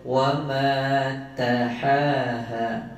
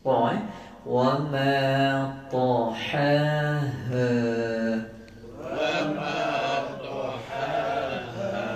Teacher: Ta tu jelas dan tebal. Ada yang baca wa ma tahaha, jadi nipis.